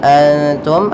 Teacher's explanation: ada nun sukun bertemu Ta Maka dinamakan dengan Ikhfa cara membacanya nunnya disamarkan ke huruf ta